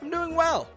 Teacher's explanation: peaking up your tone on well